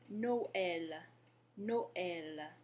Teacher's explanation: you can hear that the vowels in the O and the E in Noël are pronounced separately. That's what the tréma does for us.